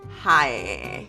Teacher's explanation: I feel like Michigan's typical accent is very nasally.